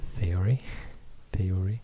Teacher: it's a voiceless unvoiced dental fricative